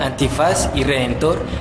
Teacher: Al pronunciar antifaz y redentor, da el martillazo en las sílabas faz y tor, que son las últimas, razón por la cual estas palabras se llaman graves.